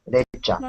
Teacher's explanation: You, when it follows T, sounds like cha.